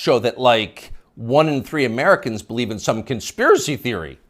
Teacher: You'll notice the upspeak, the rising inflection at the end of the sentence. That's a familiar tick in Brooklyn.